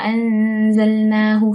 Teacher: nun mati bertemu huruf zai iaitu ikhfa hakiki dibaca dengan dengung dua harakat.